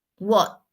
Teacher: este sonido watch se pronuncia con la lengua en el paladar atrás de los dientes y la s también va en el mismo lugar.